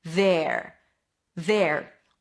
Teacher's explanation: A TH sound, v, then an e, so drop your jaw a little bit, there, and then at the end you bring the tongue up for the R. There. There.